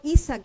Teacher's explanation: la segunda sílaba es abierta, entonces acentuó la primera.